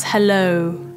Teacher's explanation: it needs to be a very gradual o quite relaxed o and it's also not a single sound it's not oh some people say hello or hello hello it's